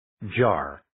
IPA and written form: dʒɑːr (Jar)